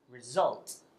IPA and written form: rɪˈzʌlt (result)